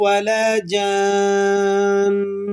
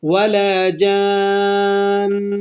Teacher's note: نون مشدد ہے، وقف کی حالت میں ہے لیکن ہم یہاں پر غنہ کر رہے ہیں